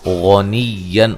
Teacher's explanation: غین کو موٹا ادا کریں گے، نون تنوین کا اظہار ہے۔ حمی، یا مدہ ہے۔